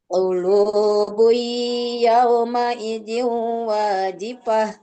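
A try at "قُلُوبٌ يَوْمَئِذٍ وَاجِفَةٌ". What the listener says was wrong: Buinya, qulubui saya belum dengar dengungnya tuh. Baru meleburnya doang, tapi dengungnya belum.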